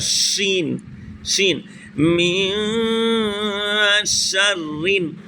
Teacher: بیچ زبان تالو سے مل کر شین ادا